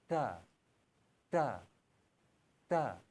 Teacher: जुबान के अगले सिरे को ऊपर के तालू के साथ हल्का सा यानी नरमी के साथ मिलाए